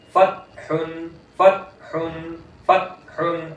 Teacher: आवाज सांस बिल्कुल बंद, फतहुन, ता की आवाज नहीं आनी चाहिए